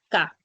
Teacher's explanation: la oclusiva velar sorda que es el sonido de K